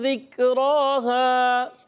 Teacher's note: کاف باریک حروف میں سے، ذکرہا، تو کاف کو باریک رکھنا ہے، را پر کھڑا زبر ہے، ایک الف کھینچنا ہے۔ ہا الف زبر ہا، اس کو بھی ایک الف کھینچنا ہے۔